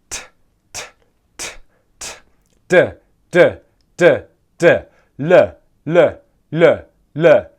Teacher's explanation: We're then going to make the L sound 8 times. Our tongue touches the alveolar ridge there for every one of these consonants.